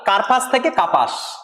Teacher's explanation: তাই র যেহেতু লোপ হচ্ছে তাই এটা রকার লোপও আমরা বলতে পারি, র ধ্বনির লোপ হয়েছে